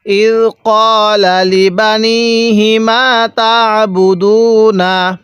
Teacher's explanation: আইনটা পড়ার সময় আমরা গলার মধ্যে হালকা চাপ দিয়ে পড়ব, তাহলে এই আইনটা সহিশুদ্ধ উচ্চারণ হবে।